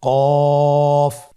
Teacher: এখানে আমরা মাখরাজের বা উচ্চারণের স্থান দেখতে পাচ্ছি। কফের মাখরাজ হলো জিহ্বার গোড়া তার বরাবর উপরে তালুর সঙ্গে লাগিয়ে উচ্চারিত হয়।